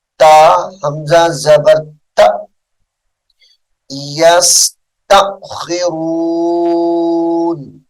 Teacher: تا کو جھٹکے کے ساتھ پڑھیں گے